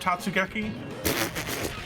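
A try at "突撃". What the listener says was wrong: It's not Tatsu, it's Totsu. Or if you say it really bad, Totsugeki. Totsugeki. Totsugeki. Totsugeki.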